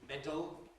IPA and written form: ˈmedəl (medal)